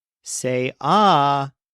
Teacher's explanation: the stress is on say but it's pronounced like say ah